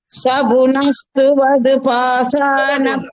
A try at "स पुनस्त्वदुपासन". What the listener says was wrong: அது துவது துவது கிடையாது, த்வது